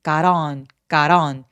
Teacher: got on 할 때 t가 모음사에 껴 있잖아요. 그래서 flap t 소리라고 하는데 water 할 때처럼 굴러가는 소리를 내게 됩니다